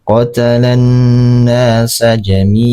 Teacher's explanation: Nah, mad iwad ini terjadi apabila ada ee hukum atau huruf yang berharakat tanwin kemudian dia berada di akhir kalimat ya dan bertemu dengan tanda wakaf. Cara membacanya tanwinnya dihilangkan. · Cara membacanya tanwinnya dihilangkan. Jadi qatalan nasa jami'a.